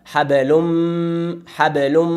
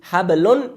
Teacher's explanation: همچنان بعد از نون تنوین میم اومده ادغام میشه، ادغام با غنه، دو حرکت غنه همراه خود داره